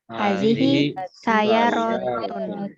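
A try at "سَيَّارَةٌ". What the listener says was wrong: Pakai tasdid jangan lupa. Sayyaratun.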